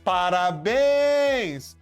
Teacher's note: A sílaba forte é a última. É o bens. Terminou em ens.